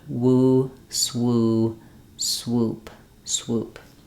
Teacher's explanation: I really just want to make sure that my w sound doesn't drop and that my oo stays tightly pursed and rounded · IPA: /wu/